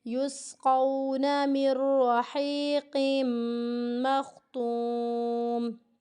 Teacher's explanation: مر بغیر غنّے کے پڑھنا ہے، صرف اور صرف ملانا ہے، یہاں پہ ادغام ہو رہا ہے۔ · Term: ادغام بلا غنّہ